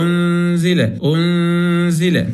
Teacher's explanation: النون ليس عليها شيء، مباشرة هنجيب مكانها غنة